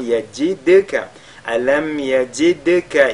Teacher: le dal lu avec al-qalqala